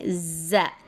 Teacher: ज़ै में ज़बान बाहर नहीं आती और स्ट्रेस के साथ पढ़ते हैं।